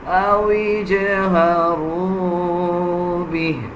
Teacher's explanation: جب ہم وقف کریں گے تو ہا کا جو کھڑا زیر ہے اس کو ہم سکپ کر دیں گے